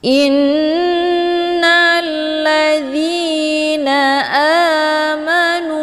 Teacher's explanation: hamzahnya langsung dimasukkan ke dalam huruf nun dengan cara ditekan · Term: gunnah musyaddadah